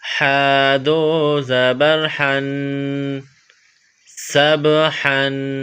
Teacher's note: سین با زبر سب، ہا گلے سے زور لگا کر ہا کو نکالیں گے